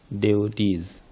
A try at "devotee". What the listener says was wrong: You got to get that V in there. Devotee, not devotee.